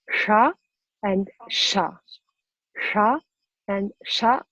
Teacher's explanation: So that S is a sha S, where the tongue touches the tip of the tongue touches the palate or behind the teeth, and it's a sha.